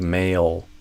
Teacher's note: I pull my tongue back toward my throat. Dark L, tongue retraction, tongue root retraction